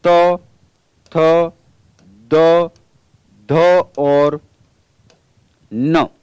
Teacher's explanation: तवर्ग के त, थ, द, ध, न, इन सभी वर्णों का उच्चारण स्थान दंत होगा।